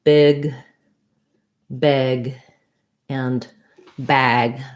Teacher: Big, my mouth is the least open. Beg, it's a little more open. And bag, it's the most open.